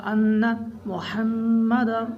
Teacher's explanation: یہاں پر نون میں غنہ ہوگا، ان محمد، میم میں بھی غنہ کریں گے